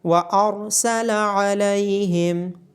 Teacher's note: را کو موٹی آواز کے ساتھ پڑھا جائے گا۔ باصحاب الفیل، صاد کو موٹا پڑا جائے گا، ہا کی آواز گلے کے درمیان سے آئے گی، ہا کے اوپر کھڑی زبر ہونے کی وجہ سے ہا کو لمبا کیا جائے گا اور فا کے بعد یا مدہ ہونے کی وجہ سے فا کو لمبا کیا جائے گا۔